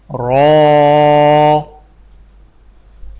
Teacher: رو کی ادائیگی میں زبان کی نوک کی پشت کو اوپر والے دانتوں کے مسوڑوں سے لگا کر موٹی آواز میں پڑھیں